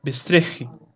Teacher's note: Ele muda a vogal, né, do a passando para ser o, tá? E se desloca para depois da consoante do dola, do rish, né?